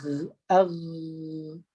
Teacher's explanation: Jadi kita akan rasa ditekan di bahagian hujung tekak atau hujung kerongkong kita. Di situlah tempat keluar huruf Ghain.